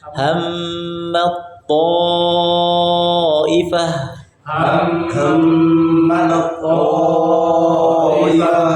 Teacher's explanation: Tidak langsung hammat tapi ham tahan gunahnya dulu.